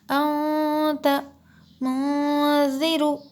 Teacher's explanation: جیسے انت منذر، انت منذر، ایسے ہم نے نہیں پڑھے، ہم نے کیا کیے کہ ہم نے نون کی آواز کو ناک میں چھپا کر پڑھے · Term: غنہ